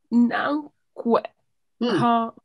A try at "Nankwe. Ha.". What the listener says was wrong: Ça, c'est pas e. Ça, c'est quoi? C'est pas e, c'est e. E. C'est ha.